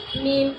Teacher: میم کا مخرج دونوں ہونٹوں کی خشکی کا حصہ